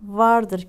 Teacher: alt dudağınız üst dişlerinize dokunur